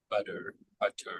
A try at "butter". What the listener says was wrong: yeah, it's a it's a quick tap, but it's not a full stop. Like some sounds will fully stop the airflow briefly, but this is like a quick little just tap.